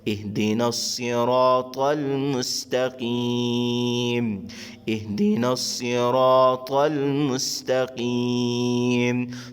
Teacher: شروع میں دیکھیں حمزہ بشکل الف کے اور آگے ہا، حمزہ اور ہا حلقے آخری حصے سے سینے کی طرف سے ادا کرتے ہیں، آگے صاد، طا اور قاف قرآن والا یہ حروف مستعلیہ کے اندر شامل ہے، تینوں کو موٹا ادا کریں گے، اهدنا الصراط المستقيم، اهدنا الصراط المستقيم۔